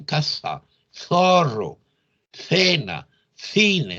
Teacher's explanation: ubican, repito, el ápice o punta de la lengua entre los dientes, producen una interdental